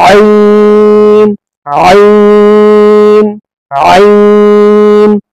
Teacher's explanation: आइन थोड़ा खींच कर आइन हलक के बीच वाले हिस्से को दबाएंगे तो आइन पढ़ा जाएगा